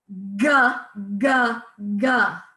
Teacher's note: Next one, you're going to be making the sound in the back of your throat. So you'll feel vibration in the back of your throat as your tongue is hitting the roof of your mouth